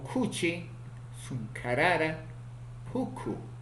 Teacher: Consonante K, oclusivo aspirado, velar, sordo, ocurre en posición inicial, medial y final